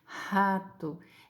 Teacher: para você pronunciar esse R glotal, você não faz força nenhuma, ó. É só deixar o ar passar, né?